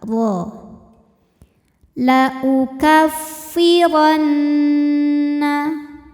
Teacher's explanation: Huruf ra dibunyikan secara tafkhim sebab berbaris fathah, maka kita bunyikan dengan tebal.